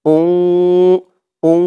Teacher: তানবিনের পরে ইকফার 15 হরফের এক হরফ ফা আসছে, তাই এখানে ইকফা গুন্নাহ, অর্থাৎ নাকের ভিতরে লুকিয়ে গুন্নাহ করে পড়তে হবে